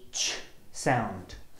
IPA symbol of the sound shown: ʧ